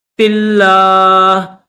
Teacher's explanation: لفظ اللہ کو باریک کر کے پڑھیں گے